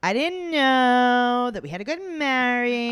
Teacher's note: she talks with such bad vocal fry